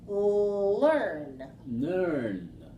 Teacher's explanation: the o sound comes through the mouth whereas the N comes through the nose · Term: nasal n